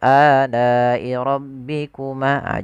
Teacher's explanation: panjangnya adalah dia empat harakat atau lima harakat ditandai dengan adanya mad th'i bertemu hamzah pada satu kata maka wajib dipanjangkan empat harakat dan jangan sampai dikurangi. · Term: mad wajib muttasil